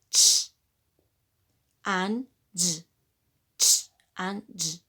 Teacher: And when we talk affricates, we know that these consonants are a combination of a plosive and a fricative consonants. You have a plosive and then a fricative.